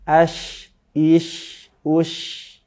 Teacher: syin ini salah satu sifatnya adalah attafasyi dia menyebar menyebar apa menyebar nafasnya dan juga menyebar ketika pengucapan lidahnya sehingga dia lebih terasa tebal atau terasa bergemuruh angin di dalamnya